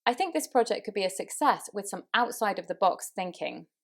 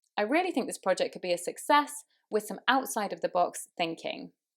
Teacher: So success, outside of the box, carry more meaning, so the voice was slightly raised on those. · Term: voice goes up